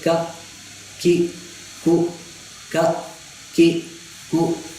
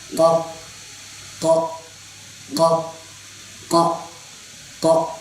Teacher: اب جب اس کو پڑھیں گے اس کو موٹا پڑھنا ہے، پر پڑھنا ہے، اور زبان کی جو جڑ ہے وہ اوپر والے جو حلق کے کوے کے پاس ادھر لگے گی نا، منہ والی سائڈ تک.